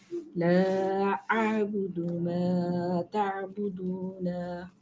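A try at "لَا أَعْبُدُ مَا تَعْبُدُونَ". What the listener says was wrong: Good.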